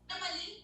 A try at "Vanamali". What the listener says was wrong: No, so I pronounce my name as Vanmali, but that's not how my name has to be pronounced. It's actually Vanamali. Ma with A ka matra also. Mama.